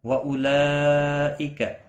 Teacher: مد متصل ہے، 4 الف کے برابر کھینچ کر پڑھیں گے